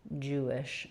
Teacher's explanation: in the word Jewish, we have the U vowel for letters EW and the J sound, first syllable stress, Jewish, and then the so an I vowel and a sh sound.